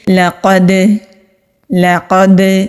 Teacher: دال ساکن ہو تو وہاں پر قلقلہ کرتے ہیں۔ قلقلہ کا مطلب ہوتا ہے آواز کا پلٹ کر آنا۔ جیسا کہ ہم بال کو زمین پر پھینکتے ہیں، اس کے اچھلنے سے جو آواز پیدا ہوتی ہے وہ پلٹ کر آتی ہے، اسی طرح سے دال کی آواز بھی پلٹ کر آئے گی۔